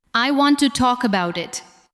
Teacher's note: Listen to how to and the first part of about become lighter.